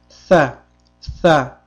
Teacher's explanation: tilimizning uchi ikki tishlarimizdan biroz oldinroqqa chiqib turadi. Hamda tilimiz tepa tishimizga tegib, pastki tishimiz bilan tilimiz orasida ozgina tirqish qoladi.